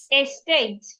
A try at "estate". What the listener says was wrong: Estate. Don't make it long. Estate.